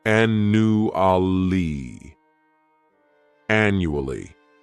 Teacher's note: This word has 4 syllables, and the stress is on that first syllable. The second syllable, it's like you're just saying that letter U, and the third syllable has that schwa, annually, annually.